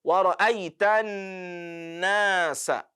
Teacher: whenever noon is carrying shadda, there has to be ghunna. And the ghunna has to be manifested.